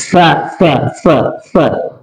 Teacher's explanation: kalau sa itu menyentuh gigi bagian depannya, ujung lidahnya, ya keluar anginnya